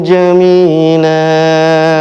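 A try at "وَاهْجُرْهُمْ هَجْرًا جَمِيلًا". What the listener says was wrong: Iya, sedikit saya koreksi huruf ja. Jadi kalau ini huruf ini ada titiknya di tengah, itu J, lebih dekat ke J. Kalau Z itu ada huruf Z. Jadi kalau ini wahjurhum pakai J, jajiju.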